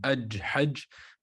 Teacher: So the sound of the Jim does not flow.